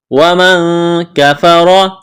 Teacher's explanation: نون ساکن کے بعد کاف ہے، یہاں پر اخفا کریں گے، آواز ناک میں چھپائیں گے